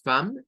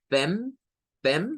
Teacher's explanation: es un sonido I, donde se mezcla la A y la E